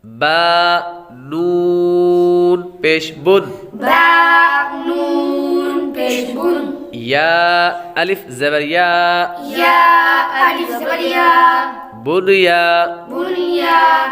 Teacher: یہاں پر ادغام نہیں بلکہ اظہار مطلق ہوگا، تو اس لیے ان چار کلمات میں غنہ نہیں کریں گے